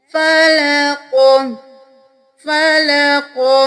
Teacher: آواز پلٹ کے واپس آنی چاہیے اور قاف کو موٹا پڑھنا ہے، موٹے حروف میں سے ہے. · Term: قلقلہ